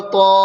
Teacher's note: الف سے پہلے تو پر زبر کی حرکت ہے، اس لیے الف مدہ ہوا، الف مدہ کو ایک الف کے برابر کھینچ کر پڑھیں